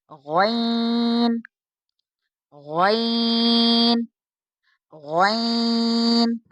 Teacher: غین حلق کے اوپر والے حصے سے ادا ہوتا ہے۔